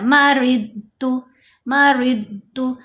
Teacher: یہ ضاد ہے، مَرِضُ یہ نہیں کرنا، ہلانا نہیں